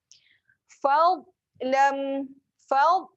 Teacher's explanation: Dhad berada di mana? Dhad berada di tepi lidah. Jadi kat sini kena terus melekat di tepi.